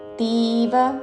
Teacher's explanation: తీ దీర్ఘము వ హ్రస్వము